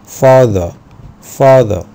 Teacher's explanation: في البريتش اكسنت ما بينطقوش الاي ار خالص، او الار في نهايه الكلمه بيقولوا father father